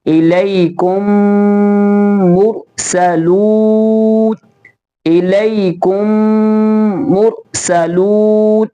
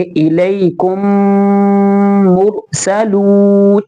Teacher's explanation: اب ہمیں میم کو میم کے ساتھ ملانا ہوگا اور گنہ بھی کرنا ہوگا